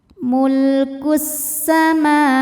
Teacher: Karena mim barisnya fathah panjang maka mim panjang dua harakat. · Ada hukum alif lam yang dinamakan dengan alif lam syamsiyah. Karena alif lam menghadapi huruf syamsiyah yaitu sin. Maka alif lam tidak dibaca. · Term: mad thobi'i muqaddar